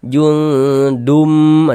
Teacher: Bunyi tanwinnya dimasukkan ke huruf mim.